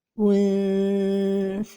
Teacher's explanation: la prononciation correcte est untha, en laissant une petite distance entre la langue et le palais supérieur